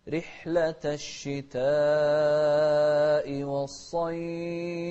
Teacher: شوف رحلة، الراء المكسورة مرققة